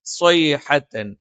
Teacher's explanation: നാവിന്റെ കൂർത്ത അറ്റത്തിന്റെ മുകൾ ഭാഗം രണ്ട് വരി മുൻപല്ലുകൾക്കിടയിൽ പിന്നിലായിട്ടും നാവിന്റെ മധ്യഭാഗം മുകളിലേക്ക് ഉയർന്നു നിൽക്കുകയും ചെയ്യും. ജ പോലെ മേലെ അണ്ണാക്കിൽ സ്പർശിക്കില്ല, അതിന്റെ തൊട്ട് താഴെ നിൽക്കും.